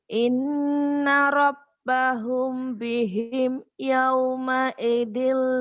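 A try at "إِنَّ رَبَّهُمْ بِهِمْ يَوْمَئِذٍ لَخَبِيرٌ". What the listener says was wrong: Itu tepat belum apa ya? Belum simetris ya lagunya. Udah ada tapi belum ini perlu dilatih saja, dilatih. Betul, belum mantap ya. Itu boleh lagu seperti itu. Tapi lagu kenceng tadi harus dilatih. Karena dari kenceng itu menusuk hati. وَحُصِّلَ مَا فِي الصُّدُورِ Inna rabbahum bihim yawma'idhin lakhabir.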